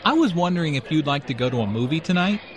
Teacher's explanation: John is nervous and does not want to appear too direct or bold. Notice how the question goes up at the end, which shows that he is not overly confident.